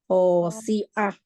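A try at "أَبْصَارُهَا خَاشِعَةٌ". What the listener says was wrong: Syinya, apa syinya? Khosyi'ah. Khosyi'ah. Ain itu banyak PR-nya ya. Saya juga suka kadang-kadang masuk ke hamzah lagi.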